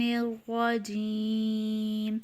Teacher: یا ساکن سے پہلے زیر ہے، یا مدہ۔ حروف مدہ کے بعد اگر وقف ہو رہا ہو تو وہاں مد عارض ہوتی ہے، تو اسے 3 الف کے برابر کھینچ کر پڑھیں گے